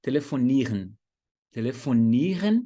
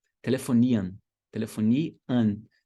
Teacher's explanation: Então tem vários verbos alemães que terminam com R-E-N. E aí, esse finalzinho soa como an, por incrível que pareça, no dia a dia. É claro que você pode falar sim com som de R-E-N, né?